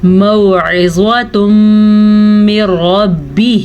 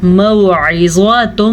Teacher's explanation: ادغام بالغنہ یہ کہ دونوں کو غنے کے ساتھ ملا کے پڑھیں گے